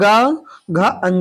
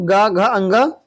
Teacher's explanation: जिन ध्वनियों के उच्चारण में स्वर तंत्रियों में कंपन हो, आप खुद बोलेंगे, उच्चारण करेंगे तो आपके स्वर तंत्रियों में कंपन महसूस करेंगे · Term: सघोष